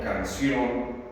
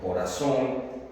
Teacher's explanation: Si se trata de una palabra como canción o como corazón o pasión, notamos que la sílaba tónica es la última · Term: agudas